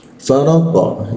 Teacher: huruf qo ketika dimatikan itu posisinya dia ada di segi tenggorokan ya. Lidahnya diangkat ke atas. Faraqo dia ada pantulan.